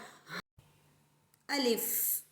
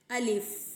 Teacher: الف ہمارے منہ کے خالی حصے سے ادا ہوتا ہے. ہم جب الف پڑھیں گے تو ہمارے منہ میں اندر ہوا سی بھر جائے گی.